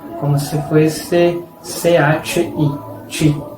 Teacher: la TI, la sílaba TI, a veces tiene sonido de chi, como si fuese CHI